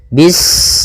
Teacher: Ketika sinnya sukun, ini ada sifat saofir. Dia harus kita alirkan nafasnya.